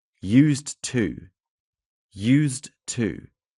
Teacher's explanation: the D sound can be reduced or elided, making it sound very similar to used to.